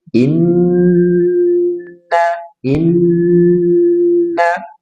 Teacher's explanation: Ada nun bertasydid tahan tiga harakat.